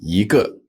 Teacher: Now, before a fourth tone, just like with bu, yi becomes a second tone.